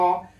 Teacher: विवृत होता है पूरा खुला हुआ और पूरा खुला हुआ स्वर है अपने पास में बोल के